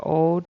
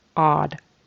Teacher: he had a long o instead of a short o